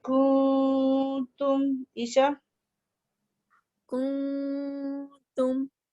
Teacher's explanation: تم اخفا نام ہی اس کا، ضروری نہیں ہے کہ نون تو بالکل کلیئر پڑھا ہی نہیں جاتا، تو ہم کاف کے مخرج سے تا کے مخرج میں ٹریول ہوتے ہوئے جیسے ایسے لگ رہا ہے آواز نیچے جہاز لینڈ کر رہا ہے اور لائٹ آواز ہے، اس لیے اس کو کہتے ہیں باریک اخفا.